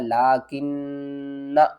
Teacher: نون مشدد ہے، first of all تو ہم اس کے اوپر غنہ کریں گے ، اور اس کے بعد کیا کریں گے، یہ نون کے